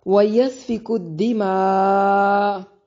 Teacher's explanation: سین کو سیٹی کی ساؤنڈ کے ساتھ ادا کریں گے